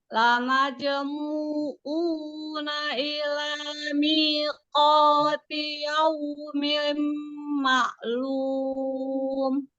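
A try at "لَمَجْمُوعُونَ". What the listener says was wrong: Ya, di huruf ainnya ya. Mu-nya 2 harokat juga.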